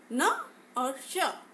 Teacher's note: न और स के समय हमारी जीभ वर्त्स अर्थात मसूड़ा में टकराती है, तो इसलिए हम इसे वर्त्स व्यंजन कहते हैं।